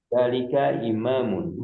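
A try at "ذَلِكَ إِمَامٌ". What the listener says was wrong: Za-nya kurang panjang sedikit, Zalika imamun. Za-nya kurang panjang sedikit. Ada, za-nya ditahan sedikit, lebih panjang. Adzalika.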